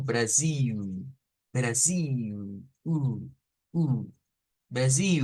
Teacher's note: se nos difiere el sonido final se nos dice que puede ser con el sonido como de una u o sea como como una W